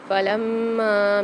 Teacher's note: میم کے اوپر مشدد آ رہی، سختی اور جماؤ کے ساتھ پڑھیں گے اس کو، اور الف مدہ بھی آ رہا ہے اور مد بھی آ رہا ہے تو یہاں پر بھی ہم کھینچ کے پڑھیں گے۔